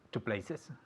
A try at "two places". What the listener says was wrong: Tenemos que añadir esta sílaba de extra. Okay, syllable. The syllable, the E. Places.